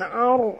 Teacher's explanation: ra ini apabila dia mati huruf sebelumnya baris atas kena baca tebal. Ar naikkan lidah ke atas.